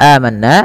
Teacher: Mad badal adalah mad yang terjadi karena adanya hamzah bertemu dengan huruf mad. A bertemu dengan huruf mad berupa alif. Maka cara membacanya dipanjangkan dua harakat.